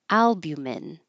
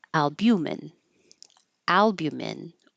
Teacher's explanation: Stress on the first syllable, albumin, or on the second syllable, albumin